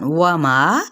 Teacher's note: واو ہونٹوں کی نا تمام گلائی سے، ما مد اصلی بالالف کا قاعدہ.